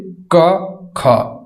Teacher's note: क ख, ये कंठ से बोली जाने वाली ध्वनियां है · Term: कंठीय ध्वनियां